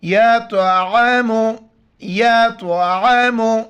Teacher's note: تو موٹے الفاظ میں سے موٹا کر کے پڑھیں گے، عین کو گلے سے کرنا ہے